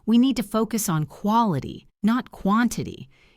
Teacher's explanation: you stress quality and quantity to show the contrast